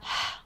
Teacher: we have the /h/ sound, a glottal fricative